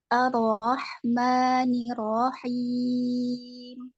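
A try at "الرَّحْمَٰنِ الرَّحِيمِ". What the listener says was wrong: Arro, tebalkan lagi. Arro. Dan tawasud dulu, ditebalkan.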